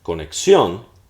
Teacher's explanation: We realize the stress is at the end.